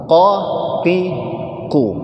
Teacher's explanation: Qaf itu tidak punya sifat hamas dan tidak punya sifat rokhawah.